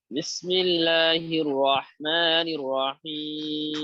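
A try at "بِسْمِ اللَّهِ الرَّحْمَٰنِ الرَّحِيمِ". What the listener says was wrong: ঠোঁট এখনো নড়াচড়া করে রয়ের বেলায়। এটা ঠিক করতে হবে আরো।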